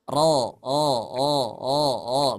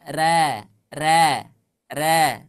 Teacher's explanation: ketika huruf ro dibaca tafkhim vokalnya harus o